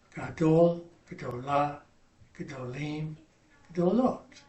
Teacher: Now, the word for big, masculine singular, is gadol. For the other 3 forms, we're going to shorten that first syllable.